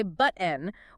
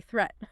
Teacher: The vocal cords literally snap shut. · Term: glottal stop